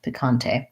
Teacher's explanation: So this is like the Spanish where the E has the A sound, picante, second syllable stress.